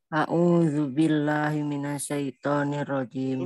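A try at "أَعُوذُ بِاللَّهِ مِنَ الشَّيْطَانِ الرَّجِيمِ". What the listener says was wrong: Himinasa bukan himinasa, himinasya, sya bukan sa. Ulangi lagi.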